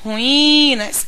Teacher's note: em ruínas o i é a sílaba mais prolongada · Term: sílaba tônica